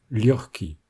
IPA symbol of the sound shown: x